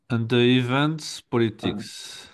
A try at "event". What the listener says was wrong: Alors, event, t'as entendu un T à la fin?